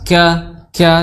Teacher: kaf, ya, di pangkal tenggorokan bertemu dengan pertengahan langit-langit atas, ka disertai dengan hembusan nafas, ya, malaika, kemudian ha, ya, ada tak marbutah di situ, malaika, ya.